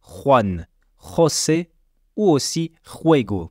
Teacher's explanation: C'est le son kha mais sans voyelle. Et son point de prononciation est au début de la gorge.